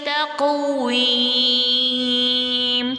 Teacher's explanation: قوف جو ہے وہ ساکن ہے، تا سے ملا کر پڑھا جائے گا ماشاءاللہ سے، اور قوف پر قلقلہ ہوگا